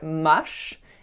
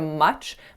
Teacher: for this word you have to fully stop your air before releasing it abruptly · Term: affricate